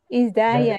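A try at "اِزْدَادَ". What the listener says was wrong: Kenapa menjadi izdaya? Dalnya mana?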